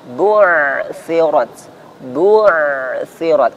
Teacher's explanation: Bunya disempurnakan dengan memajukan kedua bibir.